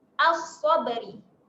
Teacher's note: Dekat sini lamnya tak berbunyi sebab kita masukkan terus pada bunyi huruf shad.